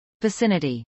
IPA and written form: vəsˈɪnəti (vicinity)